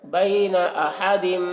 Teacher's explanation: بین احد، یہاں پر تنوین کے بعد حروف یومن میں سے میم ہے تو تنوین کو میم سے ملا کر غنہ کے ساتھ پڑھیں گے، اس کو ادغام ناقص کہتے ہیں۔